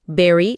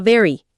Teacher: berry, la fruta con B explosiva, contra very, el adverbio con V vibrante